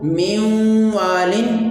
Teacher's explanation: تیسری مثال ہے نون ساکن کے بعد حروف یرملون میں سے واو آ گیا ہے، تو اس لیے یہاں پر ہم ادغام مع الغنہ کریں گے، یعنی ادغام کے ساتھ غنہ بھی کریں گے